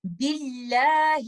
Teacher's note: یہ لام جو اللہ سبحانہ و تعالیٰ کے نام کے اندر ہے اس کو ہم ترقیق کے ساتھ پڑھیں گے، لائٹ پڑھیں گے، اس کو ہم ہیوی نہیں پڑھیں گے.